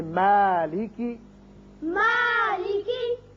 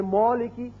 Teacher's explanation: اگر کوئی پڑھ دے مولکی تو یہ غلط ہے. کیوں کہ میم جو ہے یہ باریک پڑھا جانے والا حرف ہے، اس کی وجہ سے الف بھی باریک ہوگا